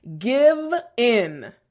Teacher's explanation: that V sound, front teeth, bottom lip, and a little bit of vibration.